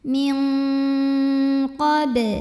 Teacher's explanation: aliran suara dari hidung lebih besar dibandingkan dengan aliran suara dari mulut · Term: ikhfa ab'ad